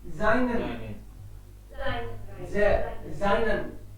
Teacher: Because after S, if any vowel is there, S becomes Z.